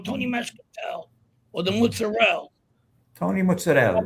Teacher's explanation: You adopted that Italian American way of saying Italian names. By avoiding the vowels at the end.